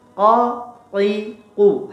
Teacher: Qa-nya harus tebal. Dalam keadaan kasrah, fathah ataupun dhammah, qa, qi, qu harus tebal. Tidak boleh qa, ki.